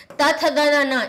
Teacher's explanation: जीभ हमारी जब दांत से टकराती है तब ये ध्वनि निकलती है